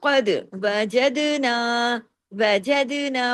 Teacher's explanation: وجدنا دال پہ کلکلا ہو رہا ہے یعنی دال پہ آواز کو ہلا دیا